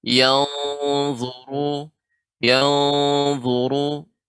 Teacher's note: Afala yang di sini juga dha huruf isti'la sehingga lebih ditebalkan